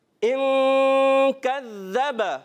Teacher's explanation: इख्फा का गुन्ना अदा करेंगे, गुन्ने के बाद काफ को बारीक रखेंगे। कज़्ज़ब, ज़ाल की अदायगी क्रिया होनी चाहिए।